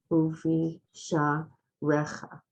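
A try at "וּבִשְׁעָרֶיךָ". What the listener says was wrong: Right, very good.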